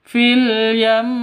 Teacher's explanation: Cara bacanya ketika denguk ketika waqaf berhenti, maka yam harus ditahan dua ketukan seperti itu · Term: ghunah